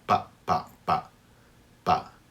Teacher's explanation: there's your pa, your hard P sound with no air.